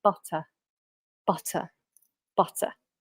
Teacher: we're not going to pronounce the r unless the following word begins with a vowel sound